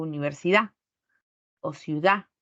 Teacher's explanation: En lugar de decir universidad, digo universidad o ciudad. Enfatizo la vocal, pero la consonante se pierde. Esa es una elisión de la D, cuando está entre vocales o al final de la palabra.